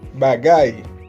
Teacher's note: Es un sonido oclusivo con una explosión y ambos labios juntos.